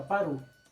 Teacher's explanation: Na pronunciação rápida, a gente diz exatamente para o. Ou seja, automaticamente junta-se essa sílaba, né, a última sílaba de para, com o artigo que vem em seguida. Então, no lugar de para o, fica parou. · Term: elisão